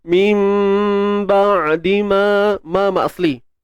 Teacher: Iqlab ni maksudnya tukar. Kita tukarkan bunyi nun kepada mim. Kemudian tutup bibir bersahaja.